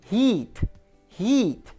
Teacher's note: a boca tá quase fechada é a vogal mais superior que a gente tem · é um som que é mais tenso, meu lábio está esticado. I, a minha língua, a boca está quase fechada.